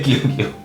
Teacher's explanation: 혓바닥이 이렇게 기역자로 말려 올라가면서 부드러운 입천장에 닿으면서 진행이 돼요 · 입천장에서 부드러운 입천장 쪽에 혓바닥이 닿으면서 발음이 되잖아요